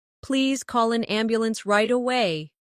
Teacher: Stress right away so the listener understands the urgency.